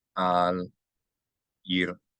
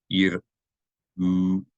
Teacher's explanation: So the u vowel is preceded by the constriction of the muscles in your throat while voiced, while vibrating your vocal cords. So this is treated, ayin is treated as a consonant in Hebrew.